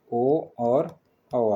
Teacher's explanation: कंठ और ओष्ठ के साथ जो बोले जाते हैं कंठोष्ठय बोलते हैं